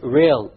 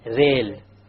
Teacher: The English R comes from the middle of the tongue, whereas the Arabic Ra comes from the tip of the tongue, along with the incisors or the gum behind the incisors.